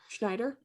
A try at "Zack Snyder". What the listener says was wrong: It's Zack Snyder, right? It's Zack Snyder, and you're saying like Jack Snyder.